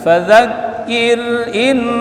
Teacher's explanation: In ditahan bacaan supaya dengung